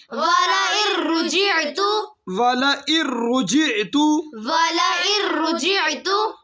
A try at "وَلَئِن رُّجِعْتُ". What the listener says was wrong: हमजा के ऊपर आइन नहीं निकालनी। वलئन